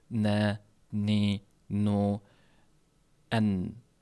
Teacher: Burundan chiqadigan tovush ham, havo ham bunga sherik bo'ladi. Bir paytda ham tilni uchki qismi va unga tegib turgan milk va dimog'. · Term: Nun harfining mahraji